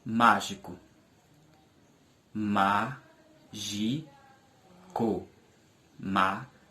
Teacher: A sílaba má é a sílaba mais forte com maior intensidade e é a antepenúltima sílaba da palavra. Portanto, a palavra mágico é uma palavra proparoxítona.